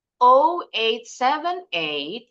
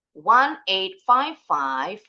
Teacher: Kita pecah-pecah pengucapannya. Nah, di setiap pecahan ini, penggalan ini, intonasinya harus naik.